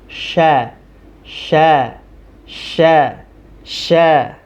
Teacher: huruf syin ini bagian tengah lidah mendekati langit-langit mulut jadi dia tidak tersentuh tuh dengan bagian atasnya namun hanya sekedar dekat sya sya sya sya ah seperti itu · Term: huruf shin